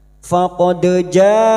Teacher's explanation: Mad wajib muttasil bertemunya mad dengan hamzah dalam satu kalimat mad wajib muttasil lima harakat kita panjangkan.